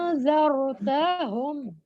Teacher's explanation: اس کے اوپر جزم آنے سے ہم جزم والے حمزہ کو جھٹکے سے پڑھیں گے